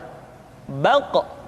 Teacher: Diucapkan dengan suara yang tebal dan dalam posisi sukun, maka terdengar pantulan suara.